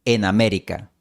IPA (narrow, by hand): en a'me.ɾi.ka